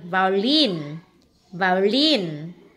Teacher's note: chúng ta sẽ đọc cái lin mạnh hơn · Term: nhấn âm cuối